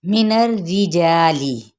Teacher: من الرجالی، اب یہاں پہ کیا ہے نون کی زبر کو را کے ساتھ ملائیں گے، را تشدید کیا ہے نیچے کسرہ ہے تو اس کو ہم باریک پڑھیں گے